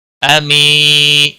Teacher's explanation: یا مدہ ہے، 1 الف کے برابر کھینچ کر پڑھیں گے